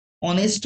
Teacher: অনেস্ট H হলেও এইচ এর উচ্চারণ প্রপারলি আসছে না, সেখানে অ এর উচ্চারণ আসছে।